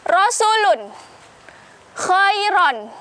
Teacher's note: Ro tafkhim di sini dibaca secara tebal